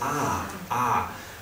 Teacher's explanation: Hillary Clinton is very famous for her O's the letter O she doesn't say o she says Ah Ah and that's another Vowel Shift that's happening in English particularly in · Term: northern cities Vowel Shift